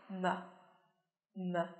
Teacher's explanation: em sẽ phải rung cổ họng một chút và chúng ta sẽ bật ra một chút nhá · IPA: /m/